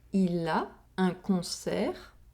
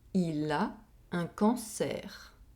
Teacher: Here, we have a difference in nasal vowel sound. We have the [ɔ̃] sound in the first sentence, and the [ɑ̃] sound in the second sentence.